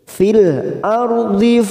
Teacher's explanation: ra sukun yang didahului fathah, kita baca tafkim atau tebal